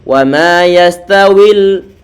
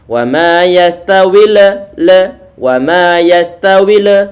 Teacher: Lam ini sifatnya pertengahan antara syiddah sama rikhawah. Berarti antara dialirkan sama dihentikan. · Kalau nggak diberikan aliran suara walaupun toh cuma sedikit, maka nanti akan muncul qalqalah dan ini salah bacaannya. Nanti biasanya kalau salah bacaannya dan tidak kita berikan sifat tawassut atau pertengahan ini, maka nanti akan muncul sifat qalqalah pada huruf lam.